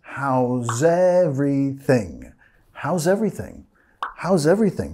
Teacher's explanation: Bajando de entonación al final, ¿ok? No es how's everything, más how's everything.